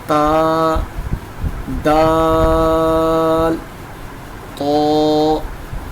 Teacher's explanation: زبان کی نوک کو اوپر کے دانتوں کی جڑ کے ساتھ لگانا ہے، تو یہاں سے اس کا مخرج بالکل صحیح ادا ہوگا۔